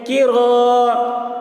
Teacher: الف مدہ کو ایک الف کے برابر کھینچ کر پڑھیں گے.